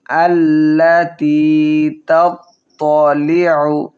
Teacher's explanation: আইন হলকের মধ্যখান থেকে উচ্চারণ করব